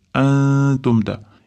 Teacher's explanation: Antumda ixfo, ya'ni nunni t'ga yashiramiz